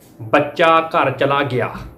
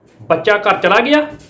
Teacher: ਜਦੋਂ ਆਪਾਂ ਕਹਿੰਦੇ ਕਿ ਬੱਚਾ ਘਰ ਚਲਾ ਗਿਆ, ਇਹ ਨੀਵੀਂ ਸੁਰ ਆ ਬਿਆਨੀਆ ਵਾਕ ਦੇ ਵਿੱਚ